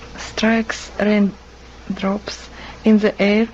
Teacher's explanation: she even has that little bit of a Trill on the r